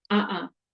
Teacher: that closure of the throat that brief closure of the throat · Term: glottal stop